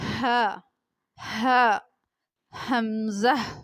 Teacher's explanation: حلق کا وہ حصہ جو سینے کے قریب سے ہے، اس سے حمزہ ہا ادا ہوتا ہے۔ جو سینے کی طرف ہے اس سے حمزہ اور ہا ادا ہوتے ہیں۔ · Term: اقصائے حلق